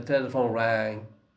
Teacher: The tongue goes up and the velum goes down. They touch each other. So what happens? The air goes out through the nose. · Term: Ng sound